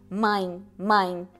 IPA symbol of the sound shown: m